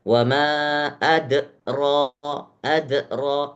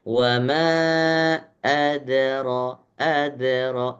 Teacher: Dia tidak terlalu terdengar de, adro seakan-akan antara de dan ada harokatnya. Da-nya harokatnya seakan-akan fathah, tapi fathahnya itu kadarnya sedikit. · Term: qalqalah yang sugro